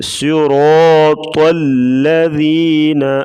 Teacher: پڑھیں گے، اور طا کو بھی موٹا پڑھیں گے، صراط الذین، لام کو بریک پڑھیں گے، بعض لوگ طا کو موٹا کرتے ہوئے لام کو بھی موٹا کر دیتے ہیں